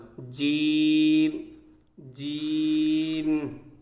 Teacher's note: جیم جس جگہ سے نکلتا ہے وہ زبان کا بیچ ہوتا ہے اور اس کے مقابل اوپر کا تالو، یعنی جیسے یہ جیب ہوتی ہے دوستو، یہ جیب ہوتی ہے، تو یہ جو جیب کا جو بیچ ہے جیب کا، اور اسی کے مقابل جو اوپر کا تالو ہوتا ہے اسی سے ہی جیم نکلتا ہے، زبان کا بیچ اور اس کے مقابل اوپر کا تالو، جیم جیم۔